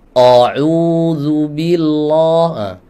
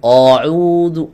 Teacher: Jadi hamzah tidak boleh ditebalkan. Tidak boleh hamzah dibaca tebal.